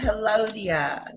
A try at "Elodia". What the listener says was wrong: No, you're saying hello, dear, like with an H.